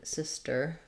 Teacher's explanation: So for sister, we have first syllable stress. Starts with the I vowel, so you might think about it's my sister or his sister, something to match that I vowel, and then sister. · Starts with the I vowel, so you might think about it's my sister or his sister, something to match that I vowel, and then sister. So thinking about sis being long and ter being short. We don't really strongly say this T sound, not like sister.